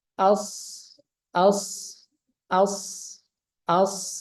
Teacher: safir itu suara yang tajam suara siul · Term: sofir